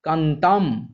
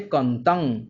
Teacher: পদের শেষে অবস্থিত অনুস্বারের পূর্ববর্তী এবং যুক্ত ব্যঞ্জনের পূর্ববর্তী দীর্ঘস্বর হ্রস্বস্বরে পরিণত হচ্ছে